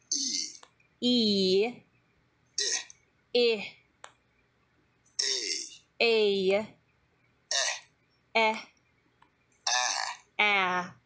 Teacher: These vowel sounds are produced with the tongue forward in the mouth. For each vowel, the tongue is placed at a different height. So, these vowels are made with the tongue forward, almost touching your teeth. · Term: tongue height